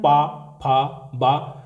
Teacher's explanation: जो ऊपर का ओट है और नीचे का ओट है वो आपस में चिपक जाते हैं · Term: ओष्ठ वर्ण